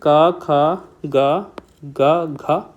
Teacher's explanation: तो ये चीज पता लगा लिया कि जिसमें जीभ का जो पिछला भाग है वो कंठ को स्पर्श करता है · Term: कंठ व्यंजन